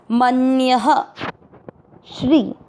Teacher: तो विसर्ग को पढ़ेंगे ह